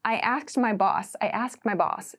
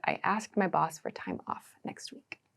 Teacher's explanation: it's like the D sound gets very very very small I ask my boss so try to reduce this sound down